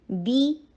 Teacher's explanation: نیچے کسرہ ای کی ساؤنڈ کریں, بیما نہیں کرنا